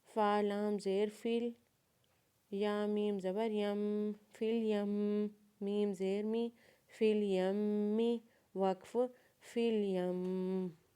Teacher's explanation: یا کو میم مشدد کے ساتھ ملاتے ہوئے یا کے اوپر زبر پڑھیں گے اور میم مشدد کے اوپر غنہ کریں گے. غنہ کرنے کے بعد میم مشدد کے نیچے زیر پڑھیں گے، اور وقف کے بعد میم مشدد کو ساکن پڑھیں گے.